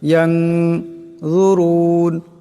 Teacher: এখানে নুন সাকিনের পরে জোয়া আসছে নুন সাকিনকে ইকফার গুণা করিয়া পড়তে হবে